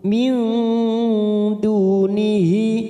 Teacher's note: nun sukun bertemu dal ikfa hakiki kita samarkan 3 ketuk.